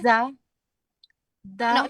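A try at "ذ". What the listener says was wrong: No. You're pronouncing the da. I want the.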